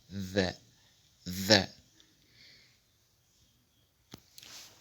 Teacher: Elle se prononce lorsque l'apex, le bout de la langue, s'introduit entre les incisives en faisant une vibration mou. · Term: Dhalun